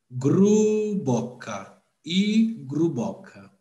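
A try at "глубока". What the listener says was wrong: Não, c'è Globo, c'è GL.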